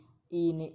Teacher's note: ઈ ને ઈ છે એ તાળવામાંથી બોલાય છે, તાળવામાંથી. એટલે આપણે જ્યારે બોલીએ ત્યારે આપણી જીભ ઈ તો ઉપર તાળવે થોડી અડે છે.